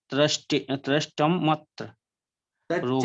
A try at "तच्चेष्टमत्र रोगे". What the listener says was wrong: तच्चेष्टमत्र रोगे। त्रस्ट नहीं है, तच्चेष्टमत्र रोगे। तत्र नहीं है, तच्चेष्टम। तच्चेष्टम। इसको संधि विच्छेद करें तो तत्चेष्टम अत्र रोगे, ऐसे